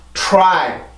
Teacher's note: 이렇게 되는데 이게 다 R 발음의 영향이에요. R 발음이 입술이 이렇게 나오는 소리이기 때문에 그 전에 바로 직전에 나오는 자음의 영향을 주게 되는 거죠